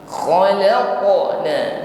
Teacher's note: bunyi hurufnya tebal ya, ada gesekan di tenggorokan sehingga ada bunyi dengkur kha ya, ada bunyi dengkur dan tebal.